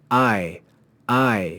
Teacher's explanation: So we should say I. We take the sound of ah and join it to the sound of e and make one sound. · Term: diphthong